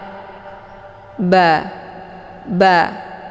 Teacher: bibir atas yang basah melekat dengan bibir bawah juga yang basah atau yang sebelah dalam. Ba, ba. Jadi bacaannya ringan.